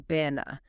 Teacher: That first a becomes a soft quick uh a little >> bu na.